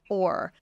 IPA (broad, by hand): ɔr